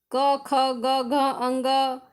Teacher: जैसे क वर्ग, जिसमें कंठ का स्पर्श करते हैं, क, ख, ग, घ, अंग, ये समय कंठ का स्पर्श करते हैं।